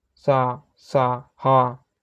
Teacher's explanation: जिन वर्णों के उच्चारण में हवा मुख से रगड़ खाती हुई धीरे-धीरे बाहर निकलती है, उन्हें उष्म संघर्षी व्यंजन कहते हैं।